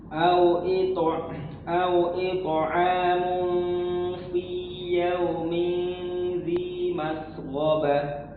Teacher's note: Perhatikan, itu tanwin bertemu fa, ya, tidak boleh ditebalkan. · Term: ikhfa